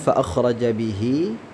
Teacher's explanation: Di sini ada tanda ya. Nah, artinya ihi di sini dipanjangkan dua harakat ya. Kemudian dia bertemu dengan huruf selain alif. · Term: mad silah qasirah